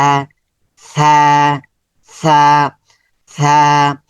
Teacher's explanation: উপরে তিনটা নুক্তা দিয়ে দিলাম এটা সাকার হচ্ছে জিহবার আগা এইযে জিহবার আগা সামনের উপরের দাঁতের আগায় সামনের উপরের দাঁতের আগাতে স্পর্শ করবে